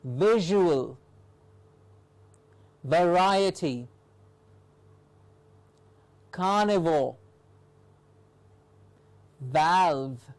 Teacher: the written v which is produced by touching the outside of the lower lip with the top teeth